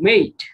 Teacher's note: in british accent we say with a diphthong